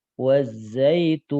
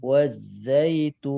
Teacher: saat waqaf dalam nun sukun, suara nun sedikit alirkan dan ngalirnya sebentar. Tidak boleh lama begini.